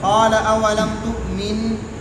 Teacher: قال اولم تؤمن، قال بلا. یہاں پر نون ساکن ہے تو جب ہم یہاں وقف کریں گے تو اس میں غنہ آنی ہوگا